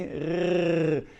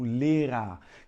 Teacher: tem um som que nós associamos ao som do gargarejo então ele é aquele r r bem vibrado feito aqui na parte posterior da garganta